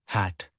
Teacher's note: Six, glottal. Produced in the glottis, the space between the vocal cords. Example, first letter sound in word hat.